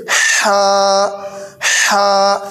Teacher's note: ये हमारा बीच हलक से अदा होता है